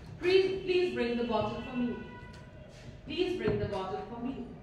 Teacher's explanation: Okay, it's a request. So there will be a rising tone.